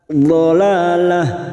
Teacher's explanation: Nadzalalah, la fathah berdiri atau alif kecil di atas 2 harokat, lalah. Tak marbutoh karena kita wakaf di sini maka kita bunyikan ha